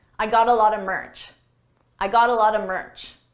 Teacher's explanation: A lot of is pronounced a lotta, a lotta. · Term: reduction